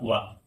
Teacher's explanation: वा जो है इसका उच्चारण स्थान है दंतोष्ठ